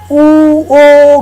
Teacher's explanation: त्यस्तै ओठको स्थिति भनेको उच्चारण गर्दाखेरि कुन स्वर उच्चारण गर्दाखेरि गोलो हुन्छ ओठ, कुन स्वर उच्चारण गर्दाखेरि गोलो हुँदैन गरेर त्यो गोलित र अगोलित भनेर छुट्याउँछौँ। जस्तो उ ओ गर्दाखेरि ओठ गोलो हुन्छ